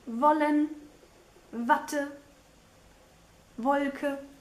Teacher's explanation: The W, though, is actually the English V sound, like in wollen, Watte, Wolke.